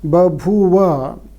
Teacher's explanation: So the proto-form, the reconstructed one, contains two aspirated forms. As the language Sanskrit doesn't allow two aspirated forms, the first one becomes de-aspirated or unaspirated.